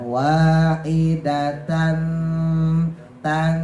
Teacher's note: Kuda-kudanya en menuju eng ya, wahidatan tan. Jadi kuda-kudanya en menuju eng, tapi jangan sampai eng, nanti kalau eng jadi kayak ikhfa abad ya. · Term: ikhfa ausat